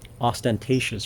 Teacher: things like ostentatious, for example, where the accent goes on the third syllable